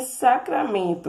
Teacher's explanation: a sílaba men é tônica e as demais são átonas